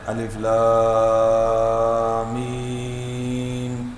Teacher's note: مد تو ہو جاتی ہے، لیکن درمیان میں جو غنہ ہے وہ رہ جاتا ہے